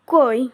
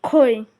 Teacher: জোড়ার প্রথম শব্দের প্রথম ধ্বনিটি উচ্চারণ করতে মুখ থেকে অল্প বাতাস বের হয় এবং দ্বিতীয় শব্দের প্রথমটি ধ্বনিটি উচ্চারণ করতে বেশি বাতাস বের হয়। কই শব্দটির ক এবং খই শব্দটির খ শব্দগুলোর উচ্চারণের সময় মুখের সামনে এক টুকরো কাগজ ধরে পরীক্ষা করে দেখতে পারো।